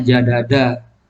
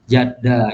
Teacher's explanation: dal ketemu dal asalnya jadada, tapi karena dal ketemu dal akhirnya berubah menjadi jadda. Itu perubahan, jadi morfemnya berubah. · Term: idgham